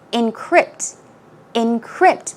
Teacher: the pronunciation is encrypt so the stress goes on the second syllable